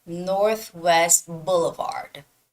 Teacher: you don't have to pronounce the T at the end of Northwest it sounds more like Northwest Boulevard you see how I'm leaving